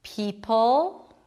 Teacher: Like it may sound almost the same to you because the dark L does sound like a W a bit, but it's not the same because for the dark L, you do create tension in the back and you don't round the lips so much.